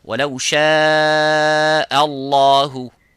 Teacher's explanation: both of these letters, this hamza and the ha, have to be muraqqaq, which is empty mouth. So only the lafzul jalala have to be full mouth.